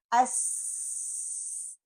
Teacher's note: سین کی آواز کیسی آئے گی، یہ ویک ہے، اس میں ہمس اور استفال ہے، اور سپیرو کی طرح، چڑیا کی طرح، اس، اگر میری زبان کی نوک میرے نیچے والے دانتوں کے ساتھ لگ جائے گی، اس، میں صفیر صحیح طریقے سے ادا نہیں کر سکوں گی۔